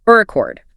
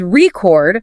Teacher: stress on the first syllable, which is a noun. Like a vinyl record.